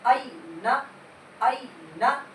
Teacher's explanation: یہاں پر نرمی سے پڑھنا ہے کیونکہ یہاں پہ حرف لین ہو رہا، یا ساکن سے پہلے زبر آ رہا۔